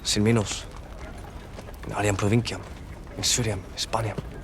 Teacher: He says it with a distinct final M.